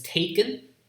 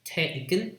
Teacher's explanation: The second vowel is kind of weak, so it's lax.